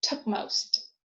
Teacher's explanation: When m or n follows p, p has nasal closure